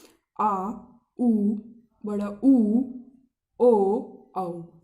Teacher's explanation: जीभ के पीछे वाले भाग का हम प्रयोग कर रहे हैं उच्चारण करने में, इसलिए इनको कहते हैं पश्च स्वर